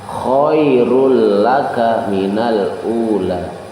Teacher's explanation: cukup dimasukkan saja ke dalam huruf idgham, tetapi tidak dikhoisumkan, tidak didengungkan ke rongga hidung. Jadi cukup bacanya adalah dimasukkan saja tanwinnya ke dalam huruf idgham, yaitu huruf lam di situ. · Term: idgham bila guna